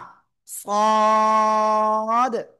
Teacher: এরপরে আমরা যে অক্ষরটা এখন শিখবো সে অক্ষরটাও একই জায়গা থেকে উচ্চারিত হবে। জিহ্বার আগা, সামনে, নিচে, দুই দাঁতের পেটও আগার সাথে লাগাবো। লাগিয়ে আমাদের একটু মোটা আওয়াজে উচ্চারণ করতে হবে।